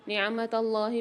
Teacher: اللہ کے لام کو موٹا پڑھیں گے